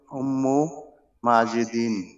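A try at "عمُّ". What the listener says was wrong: উম্মু না আম্মু, আম্মু চাচা, আম্মু,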